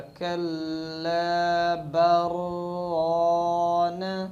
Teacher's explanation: لام اور را کا ادغام را میں کر دیتے ہیں، اسی طرح برانہ بن جائے گا۔